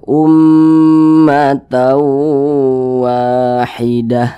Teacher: maka dibaca ummatau begitu Ummat Wahidah ah kemudian didengungkan atau digunahkan jadi suaranya itu kita tahan kita panjangkan sejenak